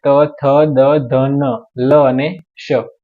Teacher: વ્યંજન છે ટ ઠ ડ ઢ ણ અને ર ષ ળ દંત એટલે દાંતની જરૂર પડે એવા વ્યંજન છે